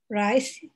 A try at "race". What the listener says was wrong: Race. Race. No, not rice. Race. No. A. Race.